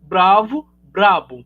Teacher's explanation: o v ele é fricativo né acabou de adquirir um traço bilabial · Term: assimilação